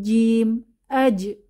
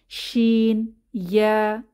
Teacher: আলাদা কিভাবে জিম এটা উচ্চারণের সময় আমরা একটু খেয়াল করি যে জিহবার মধ্যভাগ তার বরাবর উপরের তালুর সাথে লেগে যায় উপরের তালুকে টাচ করে কোন ফাঁকা থাকে না · শিন এবং ইয়া এই দুইটি হরফ উচ্চারণের ক্ষেত্রে দেখা যায় যে জিহবার মধ্যভাগ উপরের তালুকে টাচ করছে না একটু ফাঁকা থেকে যাচ্ছে শিন ইয়া আবার শিন উচ্চারণের সময় মুখ থেকে প্রচুর পরিমাণে বাতাস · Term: শিন এবং ইয়া